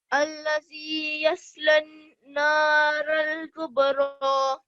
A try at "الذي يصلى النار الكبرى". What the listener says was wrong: Yeah, but don't give 2 seconds on the ra here. So it's الذي يصلى النار الكبرى الذي يصلى النار الكبرى.